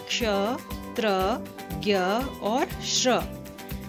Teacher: क्ष में उच्चारण करते समय क और श की ध्वनि आती है, त्र में त और र की ध्वनि, उसी प्रकार ज्ञ में ज और ञ की ध्वनि, श्र में श और र की ध्वनि मिली हुई है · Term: संयुक्त व्यंजन